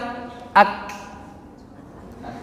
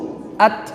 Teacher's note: Setelah kuat menekan makhrajnya, dilepas untuk menghamskan.